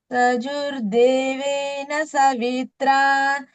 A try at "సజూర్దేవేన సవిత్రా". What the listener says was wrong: ఇక్కడ సజూ దీర్ఘం పెట్టాలి